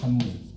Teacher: 미음 때문에 앞에 비읍이 미음으로 바뀌었잖아요. 역행동화예요. >> 네.